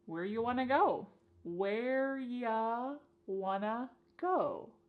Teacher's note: You becomes y and want to becomes wanna. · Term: reduction